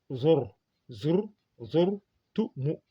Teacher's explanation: Donc quand ar ra est précédé d'un damma ou d'un fatha, donc on l'alourdit.